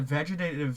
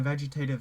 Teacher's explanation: the second time and third time I aspirated my TE's very heavily